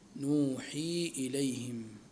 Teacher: ونقرأ لحفص نوحي إليهم، نبدل الياء نونا لحفص